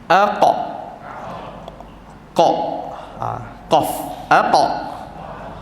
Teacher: Bila masuk huruf qaf, lantunan dia agak tebal, muncungkan sedikit.